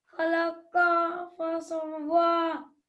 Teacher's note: Qaf is going to be thick.